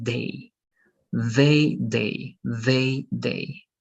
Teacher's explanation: this has to be soft, right? This has to be like they, like that vibration there